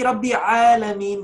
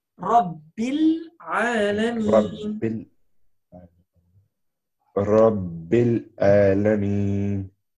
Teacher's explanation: The ba will go to merge with the lam.